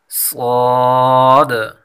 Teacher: ز اور سین یہ باریک ہیں اور صاد یہ پر پڑھا جائے گا